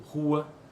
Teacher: o fonema R em posição inicial pode realizar-se em nossa língua como alveolar ou R velar, indiferentemente